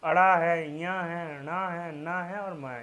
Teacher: अनुनासिक व्यंजन क्या होते हैं मतलब जो कि नाक से बोले जाते हैं